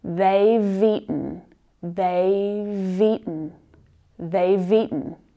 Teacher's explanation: If you link that V consonant sound to the next word, which is also very, very natural in spoken English, linking those sounds, it's a little easier to pronounce. They've eaten, they've eaten, they've eaten.